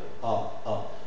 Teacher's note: c'est une voyelle orale, velaire, ouverte, arrondie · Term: A postérieur